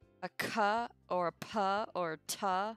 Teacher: there's no way to say a cup or a paw or tah without that puff of air